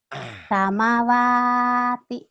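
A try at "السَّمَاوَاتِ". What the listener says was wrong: Maknya panjang. Samawati. Ini walaupun beda tanda sampai sama panjangnya. Samawati.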